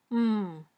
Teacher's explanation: feel the vibration of your vocal cords try this say m touch your throat gently and you can feel vibration in your throat that tells you m is a voiced sound